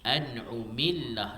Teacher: Baris di bawah bila mana bertemu dengan lamu lafzu jalalah, kalimah Allah ni dia baca dengan nipis.